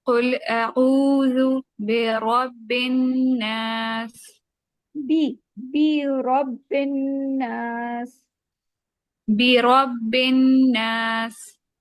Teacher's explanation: रा के ऊपर जबर है तो मोटा पढ़ेंगे इसको